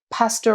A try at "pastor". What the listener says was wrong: How did you say pastor? You did not say pastor. You said like pastor. Also, you're saying pastor like pasta now. So it's losing all its meaning. Pasta, pasta.